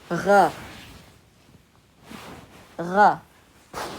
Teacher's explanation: in the back of the throat, so we do not use the front of our tongue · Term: Ghain